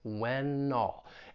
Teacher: When all, you have that final consonant sound, that N, we can link that with the vowel sound in all, when all. And really what it would more sound like is that N is going to get moved over to the beginning of all.